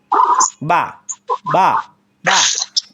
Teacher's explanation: পরে ভিজা অংশ থেকে আপনার বের হবে বা বা ঠোঁটের মধ্যে ঠোঁটে ঠোঁট চাপার পরে আসবে বা আর দুই ঠোঁট গুল করে পাতলা আওয়াজ হবে ওয়াও ওয়াও ওয়াও